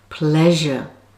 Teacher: so now let's move on to as in the word pleasure this sound is voiced and the tongue is in exactly the same place as ch on the palato alveolar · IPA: ʒ